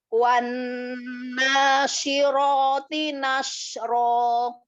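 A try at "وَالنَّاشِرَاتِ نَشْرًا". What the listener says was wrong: Taknya bisa ditipiskan lagi. Syiroti. Roknya tafhimkan lagi, tebalkan lagi. Tipiskan lagi, kasih hamas. Ro yang tafhim, angkat lagi pangkal lidahnya. Ya, jadi ro memang huruf tipis, tetapi ada beberapa keadaan ro dibaca tafhim, dibaca tebal. Ya, karena memang setiap huruf hijaiyah itu punya hak dan mustahak.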